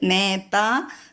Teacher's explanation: നേതായിലെ നാ ദന്ത്യമായിട്ട് ചൊല്ലണം. നേത, നേത എന്ന് ചൊല്ലരുത്, നേത.